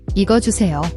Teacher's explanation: It's a soft J sound, not a hard CH. Think of the J in jam, not chai.